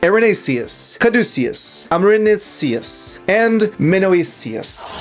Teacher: It's with the S sound, an unvoiced alveolar fricative consonant.